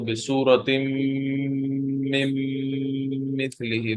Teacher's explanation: there will be a gunna in mim.